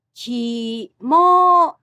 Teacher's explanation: The word kimono also has the same pitch pattern of low to high.